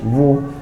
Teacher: ওয়াওয়ের উচ্চারণের সময় এমনিতেই ঠোঁট গোল হয়, তার মধ্যে আবার পেশ আছে। পেশ থাকলেও পেশের উচ্চারণে ঠোঁট গোল হয়।